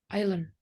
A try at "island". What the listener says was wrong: Nah itu udah benar ya island. Tapi S-nya nggak dibaca island.